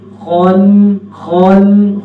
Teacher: خا موٹا بھی ہو رہا ہے، ہونٹ گول بھی نہیں کرنے